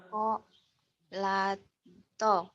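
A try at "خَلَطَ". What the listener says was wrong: Kho, bukan ko ya. Kho, khair. Kholata.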